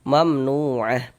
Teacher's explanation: Sehingga nu kita baca panjang. Mad tabi'i panjang 2 harokat.